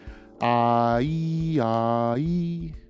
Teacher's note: the tongue is lowered for AH and it's raised for EE